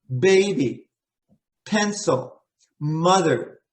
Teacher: b p and m your lips are closed